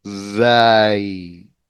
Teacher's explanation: when you say zai, you are suppressing some of the air. It's not a free flow of air here. There's a blockage. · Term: suppress some of the air